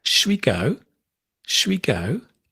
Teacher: Shwi is actually shall we. The al we drop.